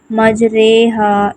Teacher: امالہ، یعنی الف کو یا کی طرف اور زبر کو زیر کی طرف مائل کر کے پڑھنا